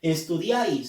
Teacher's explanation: se tilda porque es una palabra aguda terminada en ese y la fuerza de voz le lleva a la vocal abierta